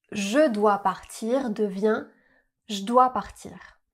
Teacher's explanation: On va rarement prononcer le son e du mot je, mais on va le contracter avec le verbe ou le mot qui le suit.